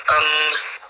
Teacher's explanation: ام میں کیا ہوتا ہے کہ بند ہونٹوں کے خشک حصے سے، باہر والے جو خشک حصے ہیں نا وہ آپس میں ایک دوسرے سے ٹچ ہوتے ہیں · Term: میم